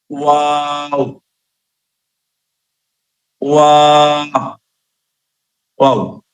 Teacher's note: ওয়াও, দুই ঠোঁটের মধ্যখান থেকে একটি হরফ উচ্চারিত হয়।